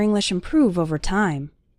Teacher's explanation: stress on the second syllable improve